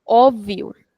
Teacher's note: So we are extending the sound of O because we have an accent there.